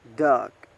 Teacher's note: the place of articulation is velar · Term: the g sound